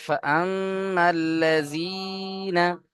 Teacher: লামের উপরে তাসদীদ দুবার পড়তে হবে, একবার ডান দিকের সাথে মিলিয়ে, একবার নিজে নিজে